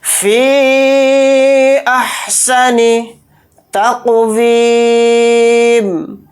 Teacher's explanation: احسن تقویم، تا کو قاف ساکن کے اندر ملا دیں گے، قاف کو موٹا پڑھیں گے اور قاف کے اندر قلقلہ بھی کریں گے کیونکہ قاف کے اوپر جزم ہے، قاف حروف قلقلہ میں سے